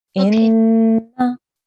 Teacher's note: We're going to hold with a sustained nasal sound because this is a nun gunna. There's a shadda there.